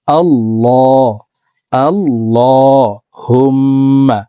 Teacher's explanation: আল্লাহুম্মা, এখানে আমরা অনেকে আল্লাহুম্মা পড়ে থাকি। এখানে এই লামকে মোটা করে অর্থাৎ ল বলে পড়তে হবে